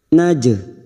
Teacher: huruf Jim tidak memiliki sifat rohwah pada saat disukun hanya dipantulkan karena huruf Jim huruf Qalqalah